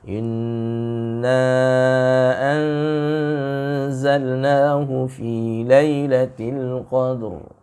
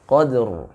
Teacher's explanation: Tetap dibaca ra-nya. Ra-nya terbaca dengan tabkhim karena sebelumnya fathah.